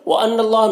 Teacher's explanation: نون مشدد غنہ ہوگا اور اللہ کے لام کو پر پڑھیں گے، کھڑا زبر 1 الف کے برابر کھینچیں گے۔